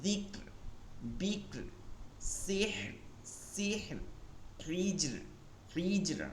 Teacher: তাহলে এটা চিকন, যিকর, বিকর, সিহর, সিহর, হিজর, হিজর। রকে কি করতে হবে? পাতলা উচ্চারণ রাখতে হবে